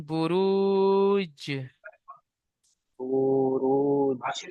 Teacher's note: জিম হুরুফে কলকলা, দেখেন, হরুপে কলা, তাই জিমকে কলকলা করে ডান দিকের অক্ষরের সাথে মিলিয়ে পড়তে হবে।